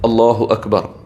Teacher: അള്ളാഹു എന്ന് പറയുമ്പോൾ നമ്മുടെ പല്ലിൻ്റെ മുകളിലെ ഊനിലാണ് നാവ് തട്ടേണ്ടത്. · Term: കനപ്പിച്ചു പറയേണ്ട ലാമാണ്